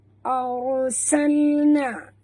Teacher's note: Ra itu mati, naikkan lidah sebut tebal. Arsalna, na mak tabi'i, ya, dua harakat.